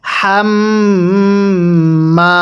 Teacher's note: এরপরে হা মিম জবর হাম, হাটা উচ্চারণের সময় মুখ দিয়ে বাতাস বের করব, হাকে মিমের সাথে লাগিয়ে গুন্নাহ করব, কারণ মিমে নুনে তাসদিদ গুন্নাহ করা ওয়াজিব।